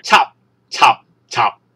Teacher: 讀起上嚟就會係個音一出就即停，我哋叫做入聲